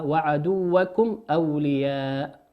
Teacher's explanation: الميم في كلمة وعدوكم هي ميم ساكنة أتى بعدها حرف الهمزة والهمزة من حروف الإظهار نظهرها